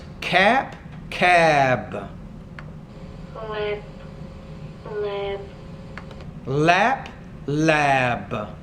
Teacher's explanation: base, flap, flab, Again, you have flap, flab. So the vowel sound in the second word's longer because the word ends in a B, a voice consonant.